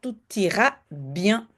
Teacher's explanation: t pourquoi un prononce le T à la fin parce que on fait la liaison avec le I de ira